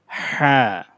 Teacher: গলার মধ্যভাগ থেকে চাপ দিয়ে উচ্চারণ করতে হবে